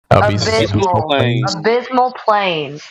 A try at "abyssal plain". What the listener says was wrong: Abyssal, not abysmal.